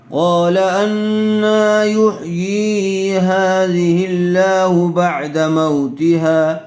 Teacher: وَهِيَ خَاوِيَةٌ عَلَى عُرُوشِهَا قَالَ أَنَّىٰ يُحْيِي هَٰذِهِ اللَّهُ بَعْدَ مَوْتِهَا لفظ اللہ کی لام سے پہلے والے حرف کے نیچے زیر آئی ہوئی ہے اس لیے لفظ اللہ کی لام کو باریک کر کے پڑھیں گے